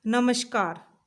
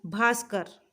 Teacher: कहीं कहीं पर विसर्ग का स हो जाता है। जैसे नमः, यहाँ पे हलंत आएगा बच्चों, जैसे नमः प्लस कार, नमस्कार।